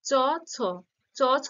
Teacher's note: চ, ছ, তালব্য বা তালুতে স্পর্শ করছে, তাই এটা অঘোষ ব্যঞ্জন কিন্তু তালব্য ধ্বনি।